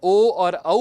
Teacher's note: जब हम ओ और औ कहते हैं तब हम ओष्ठ का भी प्रयोग करते हैं और कंठ का भी प्रयोग करते हैं। इसलिए ओ और औ इन दोनों का उच्चारण स्थान विद्यार्थियों कंठ और ओष्ठ है। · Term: द्विस्थानीय वर्ण